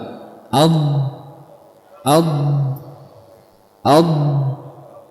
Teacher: Sisi lidah menempel atau menekan ke dinding geraham atas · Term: huruf dad